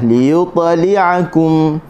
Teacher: huruf ta berada di tengah kalimah sukun. Sukun ni sukun asli ni. Okey, maka kita baca dengan bunyi qalqalah.